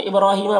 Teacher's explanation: इब्राहीम बा में कलकला होगा, रॉ को पुर पड़ेंगे और ही में या मद्दा है, एक अलिफ के बराबर खींचेंगे।